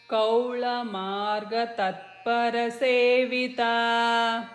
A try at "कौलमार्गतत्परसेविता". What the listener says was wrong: Again here, don't give the pause after kaula. Kaulamargatatparasevita is one word.